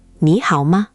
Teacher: Just make sure the hao tone dips and rises clearly, and the ma is very light, almost like an afterthought.